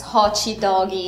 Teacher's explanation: when they're speaking English they often end words with like an e sound